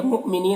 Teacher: حمزہ ساکنہ ہے واو کی شکل میں، تو یہاں پر جھٹکا لگے گا